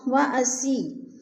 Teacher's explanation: یا ساکن سے پہلے سین کے نیچے زیر ہے تو یا مدہ کو بھی ہم نے ایک الف دو حرکات کے برابر کھینچ کر پڑھنا ہے